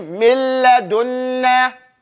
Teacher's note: So that lets you know what that sound is. There is no gunna in that pronunciation of that first noon. In fact, the noon is completely gone. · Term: idgham without gunna